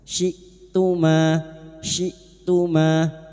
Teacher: Hamzah sukun, syi'tuma jangan samakan dengan ain. Hamzah memiliki sifat jahar dan syiddah, tertahannya nafas dan tertahannya suara.